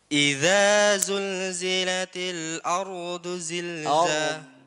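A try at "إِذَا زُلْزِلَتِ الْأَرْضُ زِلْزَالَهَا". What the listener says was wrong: Do. Tekan. Do. Tekan. Idza tipiskan. Zilza bukan zil. Tipiskan. Do. Tekan. Do. Ardu. Ro-nya tebalkan. Ardu zil.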